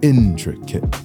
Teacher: the word intricate has a pattern of stressed unstressed unstressed intricate the word tomato has a stress pattern of unstressed stressed